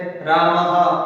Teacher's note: यानी जैसे रामः, ये विसर्ग का उच्चारण है अर्ध ह के रूप में किया जाता है, यानी आधा ह होता है उसके रूप में इसका उच्चारण विसर्ग का किया जाता है।